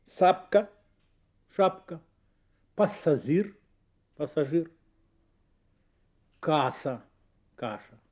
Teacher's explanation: Шипящие звуки заменяются свистящими. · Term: сладкоязычие